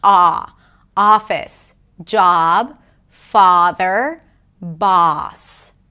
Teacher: your mouth opens more and the lips round just a bit, not too much.